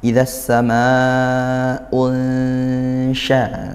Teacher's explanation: Idasa unsya itu disamarkan dengung. Samar antara bunyi nun dan juga bunyinya huruf ikhfanya yaitu huruf syin yang di sini ya. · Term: ikhfa haqqiqi